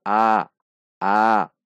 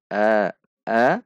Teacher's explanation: harokat fathah pada bahasa Arab pada cara membaca Alquran adalah setengah atau di tengah-tengah tidak terlalu terbuka